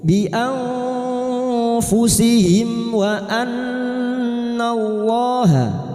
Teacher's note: Mim sukun bertemu wawu idhar syafawi, mim sukun dibaca jelas tanpa mendengung